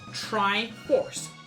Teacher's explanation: the traditional American accent, and that includes Canadian for some reason, is very rhotic, which means R's are emphasized.